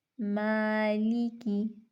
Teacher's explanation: یہاں پہ ما قبل حرف باریک ہے تو ہم الف کو باریک پڑھیں گے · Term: باریک الف